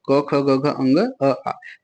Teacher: कंठ से क्या क्या बोला जाता है क ख ग घ अंग और अ और आ बोला जाता है